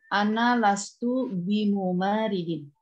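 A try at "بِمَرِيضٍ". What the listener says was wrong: Aywa, bukan mumaridin ya. Bimaridin. Aywa, bimaridin. Lastu bimaridin ya, bimaridin. Ya, la ana lastu bimaridin. La ana lastu bimaridin.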